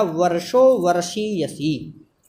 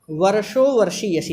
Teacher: रेफ अर्थात रकार और शकार अर्थात मूर्धन्य सकार, माने रेफ और मूर्धन्य सकार के योग में होने वाली जो स्वर भक्ति है वह स्वर भक्ति हंसपदा कही जाएगी। जैसे उदाहरण दिया वर्षो वर्षीयसी।